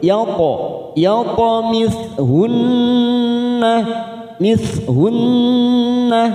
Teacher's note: nun yang bertasdid gunna musaddada kita tekan 3 ketuk